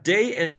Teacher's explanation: Tiene que estar, en inglés, tiene que estar la lengua arriba, detrás de los dientes superiores, tocando el alveolar ridge.